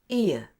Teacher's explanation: your jaw and lips close at the end of the schwa sound to a relaxed and neutral position with your tongue low. and then glide the two together like this /ɪə/. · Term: /ɪə/ sound